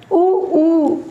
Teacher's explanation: ऊ होंठ हमारे गोल हो रहे हैं, ऊ बोल के देखिए, होंठ जो हैं वो गोल हो रहे हैं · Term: ओष्ठ्य